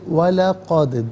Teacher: وَلَقَدْ ملا کر پڑھیں گے، وَلَقَدْ دال ساکن ہے لیکن حرف قلقلہ ہے تو آواز لوٹتی بھی محسوس ہونی چاہیے